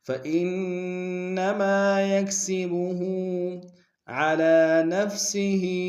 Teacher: علی میں لام کے اوپر کھڑا زبر ایک مقدار میں کھینچیں گے، ہا کے نیچے کھڑی زیر ہے، اس کو بھی ایک مقدار میں کھینچیں گے۔